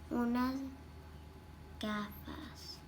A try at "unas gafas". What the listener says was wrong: did you read the S?